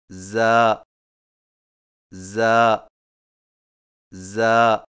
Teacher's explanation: زا کی ادائیگی میں زبان کی نوک کو سامنے والے نیچے کے دو دانتوں کے کناروں سے مضبوطی سے لگا کر باریک اور سیٹی جیسی آواز میں پڑھیں